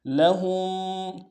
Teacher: ہاں کو میم ساکن کے ساتھ ملانا ہے، میم ساکن میں یہاں پہ غنہ کریں گے